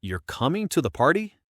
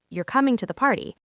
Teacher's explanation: If my voice goes up at the end, you're coming to the party. It sounds like a real question. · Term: rising intonation